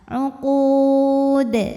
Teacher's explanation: Kemudian dalnya ini jika berhenti hukumnya adalah qalqalah kubra karena ada huruf qalqalah yang sukunnya ini tidak asli ya, melainkan karena kita berhenti dibacanya kita pantulkan dengan pantulan yang lebih besar, lebih berkumandang